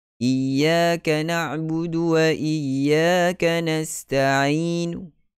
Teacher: mad arid lisukun tidak dipanjangkan bersama ar-raum, tetapi dibaca pendek seperti wasal